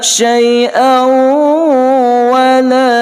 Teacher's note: tanwin di atas hamzah bertemu dengan waw, hukumnya idgham ma'al ghunnah, berdengung 2 harakah